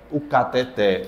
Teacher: A mais forte é o té.